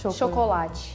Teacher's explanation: I think the biggest difference, even with you, is that we don't say cho at the beginning, we say sho. Chocolate. And the T then, it's like chi sound.